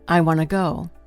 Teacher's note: Most Americans will not emphasize the word to. Instead, they reduce it. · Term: reduction